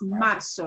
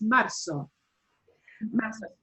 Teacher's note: And it will not sound like a Z in English, right? It's marzo. It'll sound like an S.